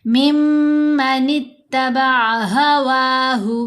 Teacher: وَمَنْ أَضَلُّ مِمَّنِ اتَّبَعَ مِمَّ، یہاں نون پر بھی ہم نے غنہ کیا، نون مشدد ہونے کی وجہ سے. یہاں میم مشدد ہونے کی وجہ سے میم پر بھی غنہ کریں گے